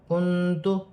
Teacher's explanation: نون ساکن میں اخفا ہوگا، آگے تا حرف اخفا میں سے ہے